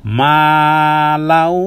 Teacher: এবার আমি ওয়াও কে ভালো করে ধরবো গুন্না সহ করে ধরবো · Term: এদগামে বা গুন্না